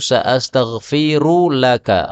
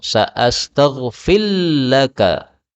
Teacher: ra ketemu lam, boleh idgham